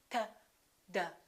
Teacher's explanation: in both of those cases, the tongue is touching directly behind the teeth